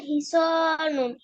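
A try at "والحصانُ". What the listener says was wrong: এন হবে লাস্টে। আলিফ লাম থাকলে এনটা ড্রপ হয়ে যাবে, এক পেশ হবে, দুই পেশ হবে না।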